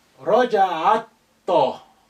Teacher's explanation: Ta is sun letter, and that's why the lam has become quiet. Alif is quiet, is silent because it's not at the beginning.